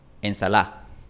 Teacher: En Chile prácticamente nadie pronuncia ensalada. En Chile la gente pronuncia ensalá.